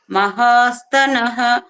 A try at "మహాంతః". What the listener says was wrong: మహాంతః మాస్తనః లేదమ్మా, మహాంతః.